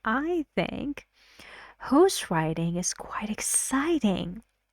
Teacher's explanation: I make the word exciting more stressed stronger stress in that because you know it's a very exciting activity for